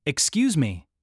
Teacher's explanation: Or if you say it with a falling tone, excuse me, it sounds like you're offended.